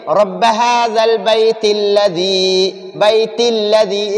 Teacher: اگر وقف کریں گے تو ہم ادھر تا کو ساکن کریں گے، اگر وقف نہیں کریں گے تو اس تا کو لام کے ساتھ باندھیں گے